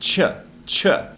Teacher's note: the sounds together they actually form what's called an affricate and if you say these really closely together and kind of run them together it instead of sounding like tissue it sounds like ch